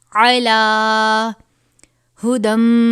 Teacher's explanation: عین کو باریک پڑھیں گے. عین کی آواز نیچے کی طرف جائے گی.